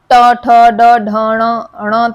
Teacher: मूर्धा मतलब तालु के पीछे जो हम जीभ की नोक से बोलते हैं